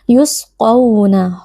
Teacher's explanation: huruf q Huruf tebal kita baca dengan mengangkat pangkal lidah